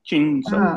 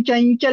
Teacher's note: पण बेसिकली अनुस्वार आहे, नाकातनं त्याचा उच्चार येतो.